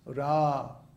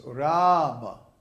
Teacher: the first A in Ram is long. So it's held for two beats, Ra. And then the A in the Ma is short.